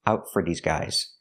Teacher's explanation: for is pronounced fur because it's not stressed